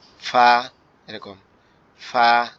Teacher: ফা অক্ষরটা হচ্ছে আমাদের উপরের দাঁত নিচের ঠোঁটের পেটের সঙ্গে লাগবে, লেগে হালকা বাতাস মতো বের হবে, বের হয়ে আওয়াজ হবে ফা, এরকম ফা, এরকম।